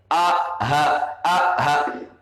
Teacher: ketika kita mengucapkan huruf H berarti bergetar pangkal pangkal tenggorokan kita